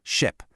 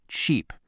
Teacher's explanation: For ship, think short and relaxed. Your mouth is kind of loose.